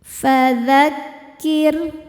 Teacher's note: ro sukun dibaca secara tarqik karena berharakat kasrah. Cara bacanya ro dibaca tipis. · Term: tarqiq